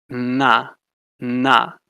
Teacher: dental, put the tip of your tongue on your teeth, the bottom of your teeth